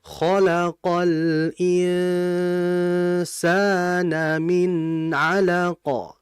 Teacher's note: Karena nun mati ya. Jadi gunah ikhfa ini harus dibaca panjang. Makud panjang ini artinya adalah ditahan lama.